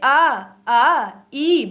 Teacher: निरानुनासिक जिनके उच्चारण में केवल आपकी जो हवा है वो मुंह से निकलेगी